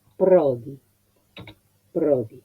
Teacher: La O es abierta porque el acento es grave.